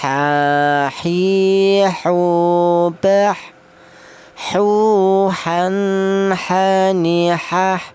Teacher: Huruf ha ini keluarnya huruf berasal dari tengah tenggorokan